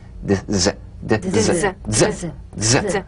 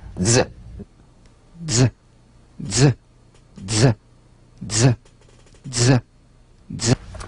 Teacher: Use a light staccato treatment without sustaining the Z. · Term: resonant staccato Z